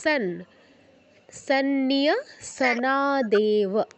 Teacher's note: নাচা, নাচার পরে এই জায়গাটা পারতেছি না। অনুস্বারের পর দন্তন্য আছে, তো আমরা অনুস্বারের জায়গায় দন্তন্য উচ্চারণ করব।